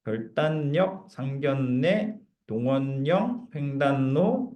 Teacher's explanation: 전부 다 리을이 니은으로 비음화가 됐다는 얘기입니다